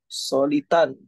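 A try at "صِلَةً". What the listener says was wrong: Solitan. Yang di kasroh yang depan. Silatan.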